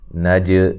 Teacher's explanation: جیم کو ہلا کے پڑھیں گے، قلقلہ کریں گے